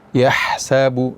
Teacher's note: Ha ini dalam keadaan sukun, maka ha yang keluar dari tengah tenggorokan ini kita baca dengan hamas atau berangin